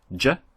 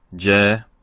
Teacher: We're comparing the jim in the short fatha and the long fatha